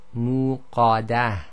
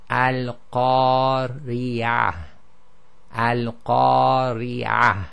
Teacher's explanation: the alif itself has now become heavy because of the preceding heavy letter, and that's why it sounds slightly heavier, but it's the alif itself which has become heavier.